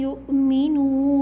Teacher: یؤمنوا میں نون کے بعد جو واو ہے وہ واو مدہ ہے، اس کو بھی 2 کاؤنٹس کھینچیں گے۔